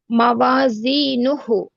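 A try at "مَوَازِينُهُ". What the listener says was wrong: ఇక్కడ దీర్ఘం దీర్ఘం ఉంది చివర్లో వావ్ సగీరా.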